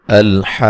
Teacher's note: لام کو ہلانا نہیں ہے، حمزہ کو تحقیق سے پڑھنا ہے، اور ہا پہ جو مد میں نے کی ہے یہ مد لازم ہے، مد لازم ہے۔